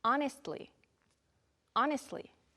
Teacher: Sometimes the T sounds like it's gone.